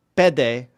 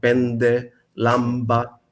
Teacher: the older pronunciation is with the nasal consonant